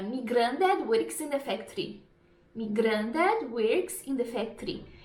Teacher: geralmente mais pro Norte eles tem um R bem forte bem puxado · em vez de falar My eles falam mi me grandad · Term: som de R